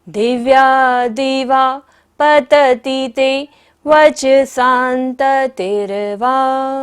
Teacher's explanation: स के ऊपर बिंदी है और बाद में क्या है? त, तो बिंदी का उच्चारण क्या होगा? न, अनंत की तरह, शांत की तरह। · दिवा पर विसर्ग है, सारी सांस का विसर्जन करेंगे।